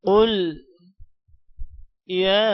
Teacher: قل یا قاف کو موٹا کریں گے، یا کو لمبا کریں گے کھڑی زبر اور مد کی وجہ سے